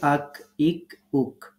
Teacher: কাফ উচ্চারণ করার সময় আমরা ধাক্কা দিব না স্বাভাবিকভাবে উচ্চারণ করব · এরপরে আমাদের 5 নম্বর যে মাখরাজটি আমরা আলোচনা করছি সেটি হচ্ছে জিহ্বার গোড়া থেকে সামনে তার বরাবর উপরের তালু। তার মানে জিহ্বার গোড়া থেকে একটু আগে বাড়িয়ে তার বরাবর উপরের তালুর সাথে লাগিয়ে।